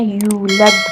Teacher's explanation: دال کے اوپر سکون ہے تو یہاں آپ نے دال کو قلقلہ کے ساتھ ادا کرنا ہے